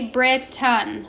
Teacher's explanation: That A and I at the end of Britain is being super lazy and making that schwa sound.